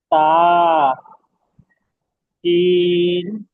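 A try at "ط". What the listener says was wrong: তা, সিন নয়, সিন হলে আঁকড়ি থাকতো। সিন হলে তিনটা আঁকড়ি থাকতো, এখানে তিনটা আঁকড়ি নেই, একটা আঁকড়ি আছে।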